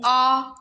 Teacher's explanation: देखो विवर्त स्वर तो एक ही है, पूरा खुल गया, जिसमें मुंह आ बोल के देखो, आपका मुंह खुल रहा है साथ साथ में, विवर्त स्वर खुला हुआ